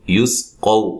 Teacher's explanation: قاف کو موٹا ادا کریں گے، واو لین ہے یہ